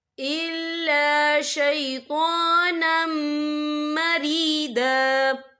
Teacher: یہ دیکھیں شیطانم، نون کے پر تنوین ہے، تنوین کے بعد جو ہے میم آ رہا ہے، اور میم جو ہے حروف یرملون میں سے ہے تو یہاں پر ادغام ہوگا، تو ہم اسے غنّے کے ساتھ پڑھیں گے